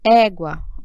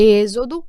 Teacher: agora o acento agudo ele já é um som aberto